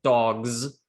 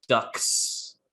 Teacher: in the word dogs if you listen closely dogs that's not really an s sound it's a z sound but in the word ducks we have actually an s sound here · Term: voicing assimilation